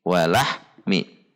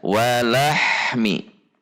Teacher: walahmi Walah Mi diputus jadi antara ah dengan Mi tidak sambung harusnya antara Ahmi itu tidak ada jeda